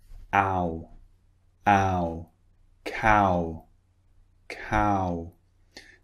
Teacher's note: second vowel on the other hand starts like this so it starts quite wide and it finishes round cow cow so it finishes with the lips rounded so the